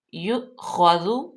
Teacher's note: اب یہاں پہ یؤخذ، اس کو ہم نے جھٹکا دے کے کیوں پڑھا؟ کیونکہ حمزہ ساکن ہے تو اس کو ہم جھٹکا دے کے پڑھتے ہیں · ذال جو ہے حروف لثویہ ہے تو اس کو ہم نرمی سے پڑھیں گے